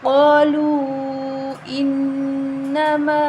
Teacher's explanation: انما نون مشدد ہے غنہ کریں گے